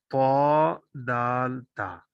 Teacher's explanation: ये तीनों हरूफ जुबान की नोक से अदा होते हैं, इसलिए इनको बेतबार मखरज नतइया या नतइया कहा जाता है।